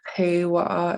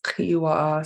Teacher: Some speakers, instead of an EI, they turn to an EE. So instead of kewa, it's kiwa.